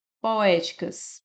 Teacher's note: a sílaba mais forte é o e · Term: proparoxitona